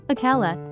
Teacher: in akala, he ate, the hamza is clearly pronounced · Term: hamzat ul qat